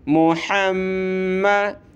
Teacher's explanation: के ऊपर ये तशदीद आ जाए तो गुन्ना करना होता है। गुन्ना यानी नाक में आवाज़ पैदा करनी है, साउंड इन नोज़, नाक में आवाज़ पैदा करनी है